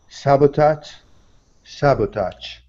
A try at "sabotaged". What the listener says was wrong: So the base word is sabotage with the z sound at the end. Sabotage. Now we're going to add a d sound at the end. Sabotaged.